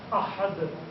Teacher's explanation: فرکشنل ساؤنڈ، یعنی سانس کو ذرا سا جھٹکا دیتی ہے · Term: دال کی ساؤنڈ